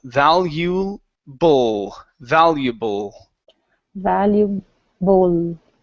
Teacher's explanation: instead of boo with an oo sound for the L, use your tongue to pronounce the L.